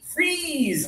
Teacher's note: Your tongue is high in your mouth, and just a little bit of air happens.